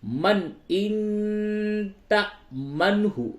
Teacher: اس نون ساکن کے بعد تا ہے، اس جگہ پہ اخفا ہوگا